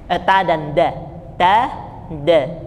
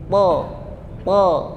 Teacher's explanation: Kalau to, pangkal lidahnya saja yang diangkat.